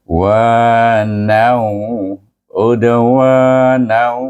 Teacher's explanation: Huruf waw adalah antara huruf idgham, maka kita baca dia wa nau, udawa nau. Itu masukkan nun itu dengan huruf waw. Dibaca dengan idgham ma'al ghunnah, iaitu dengan dengung dua harakat.